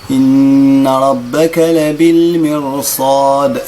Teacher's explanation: الراء مفخمة ما عنديش سبب من أسباب ترقيقها